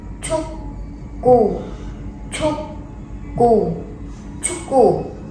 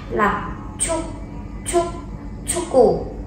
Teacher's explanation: Đây là âm bật hơi nha, các bạn cố gắng bật hơi ra.